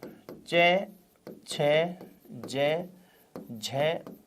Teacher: स्थान हो गया तालु, अतः वर्ण कहलाएंगे कौन से? तालव्य वर्ण